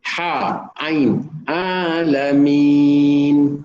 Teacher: ain dan ha. Dia ditekan suara di pertengahan kerongkong di sini secara umumnya lah.